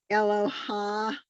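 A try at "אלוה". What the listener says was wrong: here's this is if there's a hey at the end and an ah, it's Eloah. Eloah, not ach, Eloah. It's not Eloha, it's Eloah. aspirate. It's not a chet. It's still the vowel is pronounced first. Eloah.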